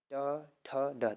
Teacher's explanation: ट ठ ड, देखिए मूर्धा से बोल रहे हैं